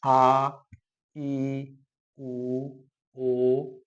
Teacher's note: या हम यूं कह लें कि जिन स्वरों के उच्चारण में ह्रस्व की अपेक्षा, यानी कि छोटे स्वर की अपेक्षा दुगुना समय लगता है, उसे हम दीर्घ स्वर कहते हैं।